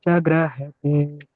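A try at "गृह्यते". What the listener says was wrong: ಗೃಹತೆ ಗೃಹ್ಯತೆ ಗ್ರ ಅಲ್ಲ ಗೃಹ್ಯತೆ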